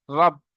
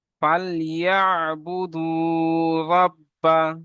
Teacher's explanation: তারপর দেখেন রব, র বা সাবাত রব, র কে পুর পড়তে হবে মুখ গোল করে। বা সাবার বা, তাসদিদুল্লাহ অক্ষর দুবার পড়তে হবে, একবার ওয়ার সঙ্গে মিলবে, একবার বা একা একা উচ্চারণ হবে।